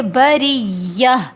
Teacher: را زیر ہے را کے نیچے، تو اس لیے یہ را باریک پڑھا جائے گا